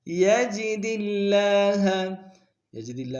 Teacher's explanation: یستغفر اللہ، یجد اللہ، یجد اللہ میں بھی دال کو لفظ اللہ کے لام کے سامنے لائیں گے، شدہ زور دیں گے، کھڑا زبر ایک مقدار میں کھینچیں گے